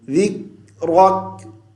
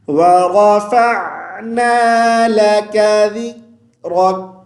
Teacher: کاف پہ قلقلہ نہیں کریں گے، کاف پہ آواز کو بند کر دیں گے